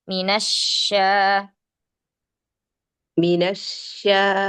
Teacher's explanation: Ee coba makhraj syinnya ya, tengah lidahnya, ujung lidahnya jangan seperti sin. Jadi lebih dominan seperti saofirnya astafasinya yang didominasi.